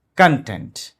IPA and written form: kənˈtent (Content)